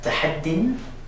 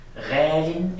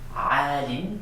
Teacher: In the indefinite sometimes that 'yaa' is going to disappear and be replaced by 'kasra tanwiin' so we'll get that 'in' sound.